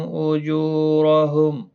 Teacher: جو واو مدہ ہے، ایک الف کی مقدار کے برابر کھینچ کر پڑھیں گے، رو زبر کی وجہ سے پر پڑھا جائے گا